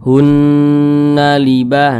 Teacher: cara bacanya digunnahkan itu suaranya itu kita tahan, kita panjangkan sejenak. Hunna libah, kita panjangkan. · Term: gunnah musyaddadah